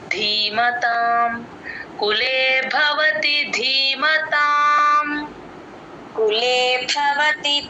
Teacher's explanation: అలాగే ధీమతాంలో ధికి కూడా మహాప్రాణం ఉంది. ధి కి దీర్ఘం కూడా ఉంది